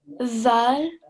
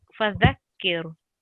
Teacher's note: So your tongue needs to come out, the tip of the tongue needs to come out between the 2 teeth, and it's a soft letter.